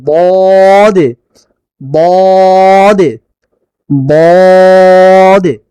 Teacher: জিহ্বার গোড়ার কিনারা যে কোনো এক পাশে হতে পারে, আবার দুই পাশে হতে পারে, উপরের মারির দাঁতের গোড়ার সঙ্গে লাগিয়ে দদ বলতে হয়।